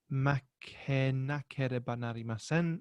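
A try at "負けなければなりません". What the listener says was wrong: Excellent. Good.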